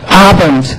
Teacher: if we have a D at the word ending, it will sound like T